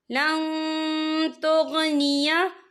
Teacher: इन्नल्लज़ीना कफरू लन तुगनिया, या देखिए लन, यहाँ पे नून साकिन है, नून साकिन के बाद जो है ता आ रहा है, और ता जो है इक्फा का वर्ड है, तो हम यहाँ इक्फा करेंगे, नून साकिन की आवाज़ को नाक में छुपाएंगे।